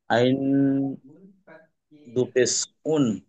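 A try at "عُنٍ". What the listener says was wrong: মাশাল্লাহ, মানে আমরা পারবো তাই তো?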